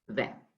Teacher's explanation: But the T is silent when you say 20